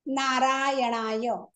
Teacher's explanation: न हा अनुनासिक आहे दुसरा हा बाणाचा आहे टाळूला जीभ लागते आपली